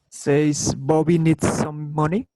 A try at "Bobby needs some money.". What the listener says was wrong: That sounded super flat. We need to do the staircase thing. So let's try to emphasize on Bobby, if you will.